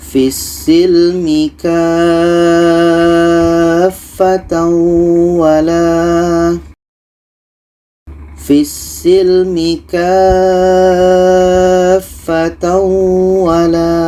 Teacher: Ka kita panjangkan 6 harakat baru masuk ke huruf yang ada tasydid. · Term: mad lazim kilmi mutsaqqal